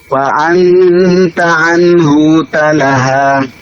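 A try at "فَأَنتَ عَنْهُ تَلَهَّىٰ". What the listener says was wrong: Fa anta anhu talaha. Hu-nya pendek. Talaha, haknya ditasydid.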